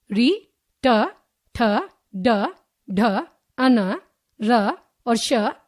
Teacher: तीन मूर्धन्य वर्ण जिन वर्णों के उच्चारण में जीभ मूर्धा यानी कि दांतों के ऊपर खुरदर स्थान को स्पर्श करती है, वे मूर्धन्य वर्ण कहलाती हैं।